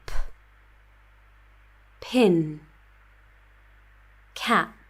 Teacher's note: complete block of air followed by explosion